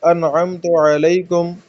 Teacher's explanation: انعمت میں نون ساکن کے بعد عین ہے تو ہم نارمل پڑھیں گے، ٹھیک ہے، اخفا نہیں کریں گے